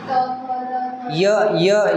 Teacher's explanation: आपली जीभ दाढाला स्पर्श होते.